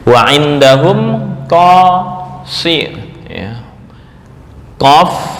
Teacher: Qof ini hanya huruf istilla'la doang tanpa idbak